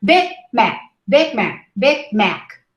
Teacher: If you hear it in context, you don't hear the final stop.